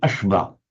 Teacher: if a Tamil speaker, for example, were reading it, he'd probably say ashva.